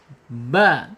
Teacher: ba mempunyai makhraj asyafatain dua bibir ya terkatup